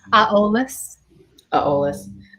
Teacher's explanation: It's stilted for me because I got two vowels in front of each other and I'm not used to that in Irish.